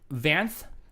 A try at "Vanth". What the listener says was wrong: Because it feels like you say Vance every time.